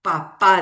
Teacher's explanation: Por ejemplo, papá decimos. ¿Cuál es la sílaba tónica? La última es la sílaba tónica